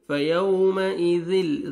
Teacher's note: فیو واو لین ہے، نرمی سے ادا کریں گے